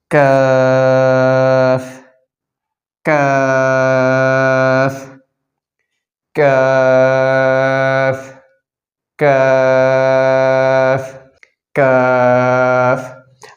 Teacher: জিহ্বার গোড়া থেকে একটু আগে বাড়াইয়া তার বরাবর উপরের তালুর সঙ্গে লাগিয়ে উচ্চারণ করতে হবে